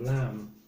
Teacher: Don't pronounce the B at the end.